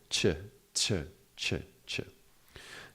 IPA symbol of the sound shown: tʃ